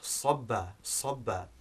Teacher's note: But then we have sobba, which begins with sad, as you can hear, it's a heavier sound, which means to pour water.